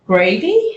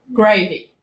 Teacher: a British English-speaking worker would say, gravy, using a rising intonation. Whereas an Indian English speaker says gravy, using a falling intonation. This was interpreted as a demand from the worker rather than an offer, and was perceived by the British English speakers as rude.